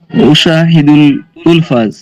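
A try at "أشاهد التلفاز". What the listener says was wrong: উশাহিদুত তিলফাজ, উশাহিদুল হয় না, এখানে শামসিয়া। উশাহিদুত তিলফাজ।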